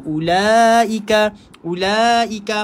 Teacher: wow yang ada tanda bulat kat atas tu, kita tak payah baca panjang, tak boleh baca ulaika, kena terus masuk dekat la tu.